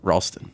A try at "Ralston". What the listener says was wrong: Sometimes people mispronounce the first syllable of my last name. Ralston. It's Ralston. roll.